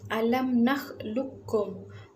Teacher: qaf tu tak didengar, dimatikan dan terus masuk kepada huruf kaf yang berbaris tadi. Ini dinamakan idgham mutaqarribain, yakni ada unsur memasukkan huruf yang kedua tadi ke dalam huruf yang pertama.